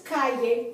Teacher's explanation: the accent is on the next to the last syllable, which happens to be the first syllable because it's only two syllables